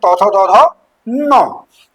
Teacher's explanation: दांत और जीभ के स्पर्श से बोले जाने वाले